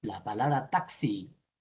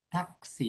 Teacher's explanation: la palabra taxi, taxi, ahí suena KS, taxi, tiene 5 fonemas, pero solamente tiene 4 grafemas. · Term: dos fonemas sucesivos, KS